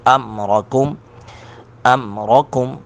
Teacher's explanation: را کو پر کر کے پڑھیں گے